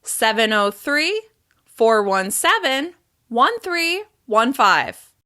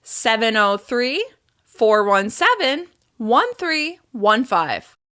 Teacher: We use rising intonation after the 3rd chunk and then falling intonation after the final 2 numbers in order to signal that the phone number is complete.